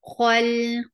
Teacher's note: kha is heavy for fatha. Open your jaws, attach with lam. Lam will get sifa of tawassut.